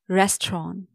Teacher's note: native speakers do skip the T sound when it comes with the N sound in their frequent speech